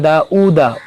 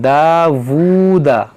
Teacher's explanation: वाव पर जब पेश हो तो उसे ऊ नहीं बल्कि वू पढ़ें, दावूदा। देखिए वूदा, दाऊदा और दावूदा में बहुत फ़र्क है, तो जब वाव पर पेश हो तो इसे आप वू पढ़ें, वू।